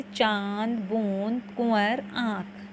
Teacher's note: जब किसी वर्ण का उच्चारण करते समय हवा मुंह के अलावा नासिका यानी कि मुंह के साथ साथ नाक से भी होती है, उन्हें हम अनुनासिक कहते हैं। तो इनका उच्चारण हम मुंह और नाक के जरिए किए,